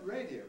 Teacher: the word radio by the way is a little bit odd radio is a very familiar word and o is a rather marginal sort of vowel it sometimes really behaves like a weak vowel and so you do sometimes hear the word radio said with